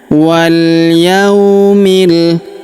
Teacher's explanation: Huruf ya kita ayun sekali karena terdapat waw sukun di depannya.